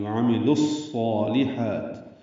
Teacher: بیچ میں واو الف لام نہیں پڑھا جا رہا، لام کو صاد سے ملا دیں گے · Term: ادغام شمسی